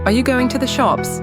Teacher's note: The pitch goes up on shops